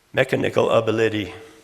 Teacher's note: all I did was remove that accent or or stress from the second syllable and put on the first and third